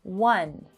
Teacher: One begins with an O, but again, it does not have a vowel sound. It has a consonant sound, W, one, like the word wonder.